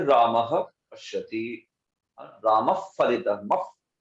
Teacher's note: वो हमारे होठ जो है उसको गोलाकार बना के स्वर आता है, उसको कहते हैं उपध्मानी।